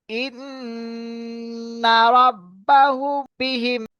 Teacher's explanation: মিম সাকিনকে একালি পরিমাণ গুণনা করে পড়িতে হবে। ইহাকে ইকফায়ে শাফাবি বলা হয়।